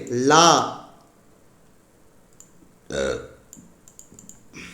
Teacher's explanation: நாவின் இரு பக்கங்கள் தடித்து மேல் பற்களின் அடியை தொடுவதால் தோன்றும் எழுத்து